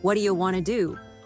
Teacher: what do you becomes WYA and want to becomes Wana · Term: connected sounds